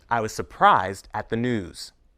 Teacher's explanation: Notice that the second S in surprised is pronounced as voiced z.